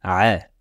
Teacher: sache que le son va se former au milieu de la gorge au niveau de l'épiglotte fait bien attention il sera inutile de forcer sur son point